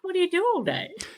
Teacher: which is what do you do all day exactly with that rising intonation